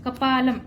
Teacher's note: ल वर जो अनुस्वार आहे त्याचा उच्चार म करायचा आहे